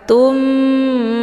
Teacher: harokat tanwinnya dileburkan ke dalam huruf mim dengan cara ditekan kemudian ditahan lebih kurang 2 kali ketukan. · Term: idgham bi ghunnah